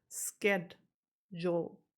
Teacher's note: a lot of Brits are using the SK variant instead of sh